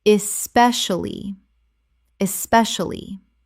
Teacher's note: Four syllables in natural speech, but the middle collapses considerably.